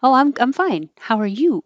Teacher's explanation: if you're the person responding now you want to ask them about them so you put the emphasis on you